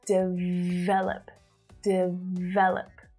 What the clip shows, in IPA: dɪˈveləp